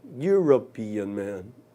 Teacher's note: Essa junção do E com o U dá ao E o som do Y